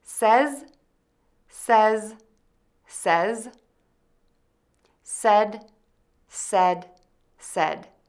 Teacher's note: To pronounce says, start with s with the tip of your tongue behind your top teeth and the air moving out of your mouth. Move to the short eh vowel that is somewhat open. End with a z by placing your tongue tip behind your top teeth and the air will move out of your mouth.